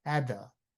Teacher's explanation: And then you don't say at the, you say at the the t and th becomes together. That's called linking words or liaison.